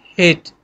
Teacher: तो ह भी अगर आप देखें तो थोड़ी सी हवा रोक के फिर हम इसको without obstruction of the air उस हवा को निकालते हैं, ह, ठीक है। तो थोड़ी सी हवा में कहीं ना कहीं रुकावट आती है, और ये बिल्कुल आपके गले से साउंड प्रोड्यूस होती है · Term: ह साउंड